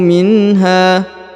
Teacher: huruf ha dipanjangkan dua harakat ya karena di depannya terdapat Alif